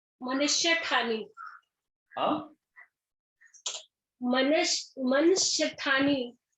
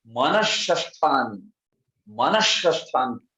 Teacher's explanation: तो शकार हो जाता है। तो ये विसर्ग जो है शकार में परिवर्तित हो गया